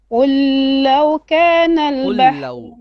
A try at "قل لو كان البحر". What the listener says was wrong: قل لو don't stretch on the lam, okay.